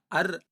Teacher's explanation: அர் அப்படின்னு உச்சரிக்கும் பொழுது நாக்கு நல்லா மடிஞ்சு மேல் தாடையில தொடும்